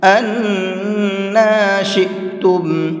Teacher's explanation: نون کے اوپر تشدید ہے تو غنہ کریں گے اور تھوڑا سا کھینچ کر کے پڑھیں گے۔ أَنَّا شِئْتُمْ، یہاں پر بھی یہ حمزہ ساکن ہے، یہ قاعدہ ابھی آپ کو پیچھے بتایا ہے، حمزہ ساکن کو جھٹکے کے ساتھ میں پڑھا جاتا ہے۔